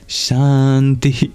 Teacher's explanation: At the end, it's a breathy echo of the vowel before it. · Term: visarga